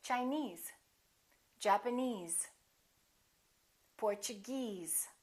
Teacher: if the word ends with e s e we stress the suffix